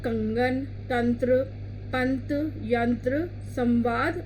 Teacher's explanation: इस ध्वनि के उच्चारण में हवा केवल नाक से बाहर आती है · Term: अनुस्वार